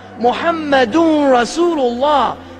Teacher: So his name is actually assimilated into the word itself. The noon of his Muhammadun becomes the part of the ra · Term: idgham